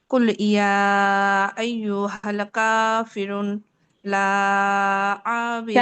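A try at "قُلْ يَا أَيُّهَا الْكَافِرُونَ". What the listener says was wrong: কাফিরুন রয় টান হবে আপু তিন আলিফ হ্যাঁ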